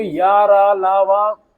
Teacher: बिना स्पर्श के निकल जाते बिना टच किए। इसलिए इन्हें स्पर्श व्यंजन कहा जाता है।